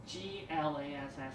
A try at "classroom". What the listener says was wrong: Not glassroom or classroom. Not remembering to say the second letter. You're saying the first letter, but you're not saying the second one.